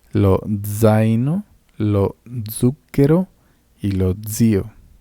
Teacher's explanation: la Z se lee como si fuera una D y una S